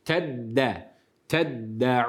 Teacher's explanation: şeddeli dal harfini de t'ye dönüştürmeden Normal şeddeli yani bir harfin iki kere okutulması değil mi iki kere okuyup hemen geçiyoruz Tabii tutmuyoruz bila gunne